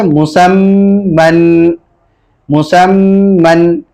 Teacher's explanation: کیونکہ میم مشدد ہے اس لیے اس میں غنہ ہوگا